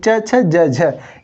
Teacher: च छ ज झ ये हमारे क्या होते हैं स्पर्श संघर्षी व्यंजन होते हैं